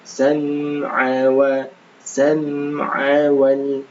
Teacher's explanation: Hati-hati dikata sam'a, ainnya jangan dipanjangkan. Sam'a wal, langsung seperti itu.